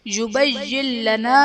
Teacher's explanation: یبین لنا میں نون ساکن کے بعد حروف یرملون میں سے لام ہے تو یہاں پر ادغام بلا غنہ کا قاعدہ ہوگا، یعنی نون ساکن میں ہم غنہ نہیں کریں گے